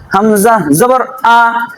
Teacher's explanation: মাখরাজটি এক নাম্বার হলকের শুরু হইতে হামজা